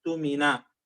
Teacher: إذا بدأت بكلمة اؤتمن همزتان، الثانية ساكنة، لكن الأولى مضمومة، إذا ستحول الهمزة الثانية إلى واو وتقرأ أوتمن مضمومة.